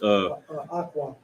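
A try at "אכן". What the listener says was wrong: You forgot one character after ak, not aqua, but Khan.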